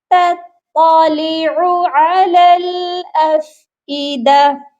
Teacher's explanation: التی تطلع علی الافئدہ، اور اس چیز کا خاص خیال رکھیے گا، دو تا اکٹھی ہیں، ایک باریک اور ایک موٹی، تو دونوں کا خیال رکھنا ہے، تا کو باریک پڑھنا ہے اور سیکنڈ قا کو موٹا پڑھنا ہے